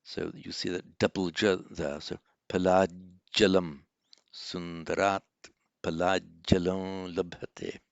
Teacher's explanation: a final T, followed by the next word beginning with a J, Palat Jalam, so the final T becomes a J